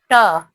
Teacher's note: प्रतिगामी, अप्राणित, अघोष व्यंजन